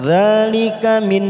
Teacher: nun sukun bertemu hamzah. Kita baca jelas tanpa mendengung namanya idhar halki.